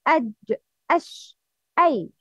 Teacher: Three letters from the middle part of the tongue, wasat lisan, jim, shin, and ya.